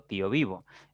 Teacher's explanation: la mayor fuerza de la voz cae en la segunda sílaba por lo tanto es una palabra grave al terminar en vocal